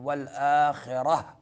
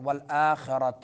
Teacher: والآخرہ را پر پڑھیں گے، اگر تا پہ رکنا ہے تو یہ تا رکنے کی صورت میں ہا بن جاتی ہے